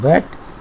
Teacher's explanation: Wa sound, as we have in wet, is again an approximant, and the open approximation is created with the help of lips. However, there is another movement in the back of the tongue and the velum between these two, and as a result, wa approximant is referred to as voiced because all of them are voiced, labial because lips are involved, and velar because velum is involved.